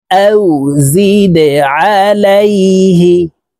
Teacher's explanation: এই দাল কলকলার হরফ নিচের দিকে ধাবিত করে ধাক্কা দিয়ে উচ্চারণ করতে হবে। দেখুন, এই যে দালের নিচে ত্রিভুজ চিহ্ন নিচের দিকে ধাবিত করে দেওয়া আছে, তো এই যা জজমওয়ালা দালকে নিচের দিকে ধাবিত করে ধাক্কা দিয়ে উচ্চারণ করব।